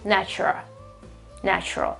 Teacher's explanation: We don't pronounce the L at the end, okay? It doesn't exist whatsoever.